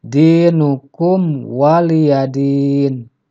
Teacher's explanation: huruf mim di sini tidak boleh dibaca dengung tetapi harus jelas Sebab di sini Terjadi hukum izhar syafawi itu minimnya harus dibaca